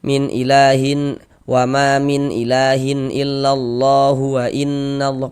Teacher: Maka panjangnya lafaz Allah ini tetaplah menjadi mad thobi'i dan dibaca dengan panjang dua harakat. Tapi tadi kita bacanya itu berwaqf di huruf H.